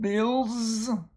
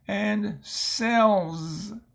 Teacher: Notice the L is voiced, and so that's why the S has the Z sound.